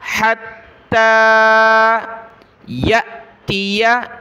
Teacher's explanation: हमज़ा साकिना झटका देंगे